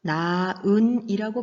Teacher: 즉 발음할 때 히읗이 탈락됩니다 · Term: 히읗 탈락